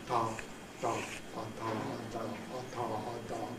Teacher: these stops or plosives would be produced with the tip of the tongue making contact with the top teeth